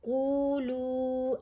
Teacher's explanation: कफ को हमने मोटा पढ़ा और कफ के ऊपर पेश है साथ वाव साकिन है इसको हमने लंबा भी पढ़ना है एक अलिफ जितना